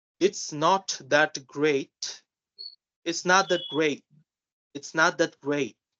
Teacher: we are not totally pronouncing the T